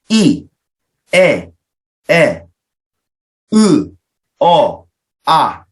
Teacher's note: 평순 모음에는 이, 에, 으, 아 이런 모음은 발음을 할 때 입술이 둥글게 오므라지지 않죠